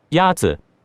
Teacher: The first tone is a high, level tone.